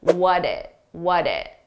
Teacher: because we have a T between 2 vowels, which we pronounce as a soft D sound